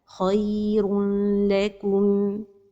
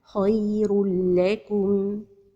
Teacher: And the إدغام with the lam is without غنة.